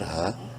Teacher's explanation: ہا کو ایک الف کے برابر لمبا کریں گے الف مدہ کی وجہ سے